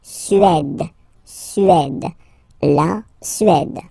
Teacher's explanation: Remember, accent grave, it's really open.